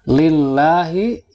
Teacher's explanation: Lillahi, ini adalah tarqiq atau tipis sebab lafaz Allah didahului oleh kasroh.